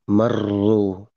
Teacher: Pergetarannya adalah seukuran apa ya 3 kali gitu. Hanya 3 kali itu aja. Itu tidak sampai berulang kali. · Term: tikror